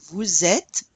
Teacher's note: Notice normally we do not pronounce the S in the vous unless it's followed by a vowel.